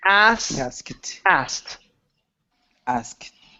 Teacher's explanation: sound and go right to the T ask ask ask okay take out the K so forget that there's a k there · So skip over that K sound and go right to the T.